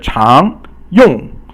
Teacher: 常 用 is rising tone, which is the second tone, and yong is the fourth tone.